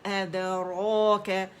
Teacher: ये अलिफ मकसूरा जो है ये खींच रही है, तो ये 2 काउंट मद असली बनेगा